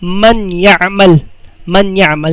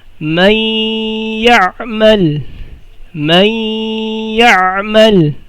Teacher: So nagiging doble na siya at may gunnah. · Paano binabasa ang idghamun bi gunnah? Magiging isa ang dalawang harf, and then may gunnah.